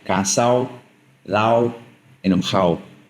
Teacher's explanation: the D sometimes disappears, specifically when it's between two vowels, like in those auto-edo words, like cansado, lado, enojado, where it's going to sound more like cansado, lao, enojado.